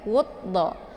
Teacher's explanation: Jadi cara bacanya itu cukup ditekan wudda. Jadi tanpa harus dibaca alif lamnya ya. Alif lamnya itu tidak dibaca lagi, langsung u-nya ke dalam huruf dhad. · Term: alif lam asyamsiyah